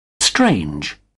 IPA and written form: streɪndʒ (strange)